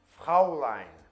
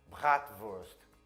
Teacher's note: um R que vem lá atrás na garganta, que é comum no francês ou no alemão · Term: gutural